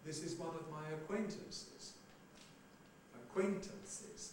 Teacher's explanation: Now, acquaintances, you've got 2 unstressed syllables, therefore there's a tail.